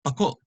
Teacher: The accent is on the last syllable